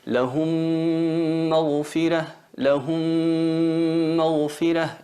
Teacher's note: Esa M muda la fusionamos en la otra que lleva vocal y se convierte en una M reduplicada con nasalización. Eso sería el idgham, sería la fusión labial.